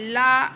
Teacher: ला हम बोल लेते हैं बिना नीचे के ओंठ को टच कराए।